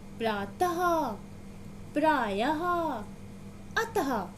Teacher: इनको बोलते समय अंत में इनकी ध्वनि हा के रूप में सुनाई देती है। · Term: विसर्ग